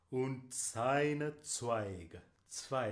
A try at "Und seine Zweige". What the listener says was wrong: Zweige. Und seine. And seine is voiced z. Savor it, enjoy it. Und seine Zweige. The other thing I want to say to you is when you have, for example, on seine, I could hear you going slightly to the second vowel, sei.